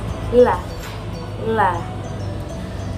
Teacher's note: la is lateral because it is produced when the air stream leaves along the side of the tongue and then of the mouth. · La is voiced, place of articulation in alveolar, and manner of articulation is lateral. La is voiced because when it is produced, the vocal cords are vibrating. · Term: lateral sound